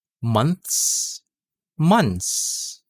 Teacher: most native speakers drop th sound and then they just pronounce your s sound